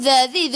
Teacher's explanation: hujung lidah keluar pada gigi depan. Zi, 2 harakat ada ya mad asli.